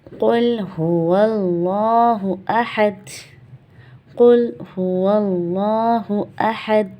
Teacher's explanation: لام جلالہ سے پہلے زبر، تو یہاں کیا پڑھا جائے گا؟ موٹا